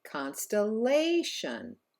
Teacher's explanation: And in the last word here, constellation, it's actually the third syllable that is stressed and therefore held out longer